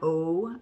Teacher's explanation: O in the back, in the middle, my lips are round